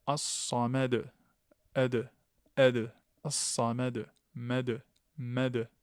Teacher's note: ici, on a une qalqala, une résonance, le rebond du point d'articulation.